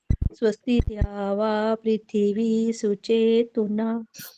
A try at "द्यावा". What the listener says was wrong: ध्यावा नहीं बोलना, द्यावा, द और य मिला होता है, ये द्यावा पृथ्वी सुचेतुना।